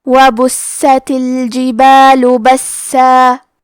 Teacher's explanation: کلمت وبست میں با پہ پیش ہے تو ہمیں پیش کو ظاہر کرنا ہے اور حرف السین کو 2 حرف کے برابر پڑھیں گے